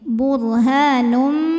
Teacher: Lalu berikutnya ada hukum idgham bi gunnah karena ada tanwin dhammah yang menghadapi huruf mim. Maka tanwin dimasukkan ke mim. Burhanum, jadi bunyinya M ya.